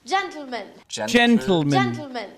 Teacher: that's exploding the T sound straight into the l sound